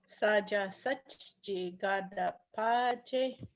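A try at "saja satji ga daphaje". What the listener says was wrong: Just lean on that H a little more.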